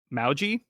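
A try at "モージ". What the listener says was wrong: Moji. Moji. It's like a longer O sound, I guess. Moji. Moji. Versus Moji.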